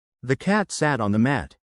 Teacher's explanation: Notice how cat, sat, and mat are emphasized.